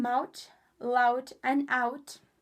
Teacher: The vowel in mouth, loud, and out. The more broad the accent, the more the first part of this diphthong moves toward the E in dress. And broad speaker might pronounce it closer to an EO sound.